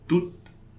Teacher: I'm pronouncing the final consonant, the last consonant before the E